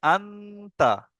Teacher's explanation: নুন সাকিনের আওয়াজকে নাকে তুলে এক আলিফ পরিমাণ গুণনা করে পড়তে হবে। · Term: ইফা